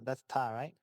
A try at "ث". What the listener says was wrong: TH, yeah. Tha with a fatha. It's just like its name.